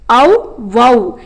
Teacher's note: ஔகார எழுத்து தனித்து வரும் இடங்களில் தனக்குரிய 2 மாத்திரை அளவில் முழுமையாக ஒலிக்கிறது